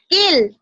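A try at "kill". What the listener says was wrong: কিল। কিল হইলে একটু লম্বা হয়ে যায়, ঠিক আছে?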